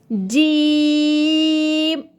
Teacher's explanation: آپ نے یہ یاد رکھنا ہے کہ جیم ہم ادا کریں لیکن ناک سے آواز بالکل بھی نہ آئے۔ زبان کا بیچ جب تالوں کے بیچ سے لگے تو جیم کا مخارج ادا ہوگا